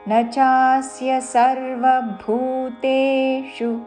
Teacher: భూ చివరిలో మూర్ధన్య షు హ్రస్వము